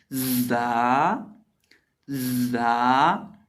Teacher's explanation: जा को जब पढ़ते हैं तो इसके अंदर सीटी की तरह की आवाज़ पैदा होती है, यानी ये सीटी वाले हरूफ में से है।